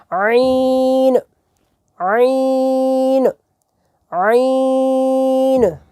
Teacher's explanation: عین جو ہے یہ حلق کے درمیان سے ادا ہونا ہے، حمزہ جو ہے وہ حلق کے آخر والے حصے سے ادا ہونا ہے۔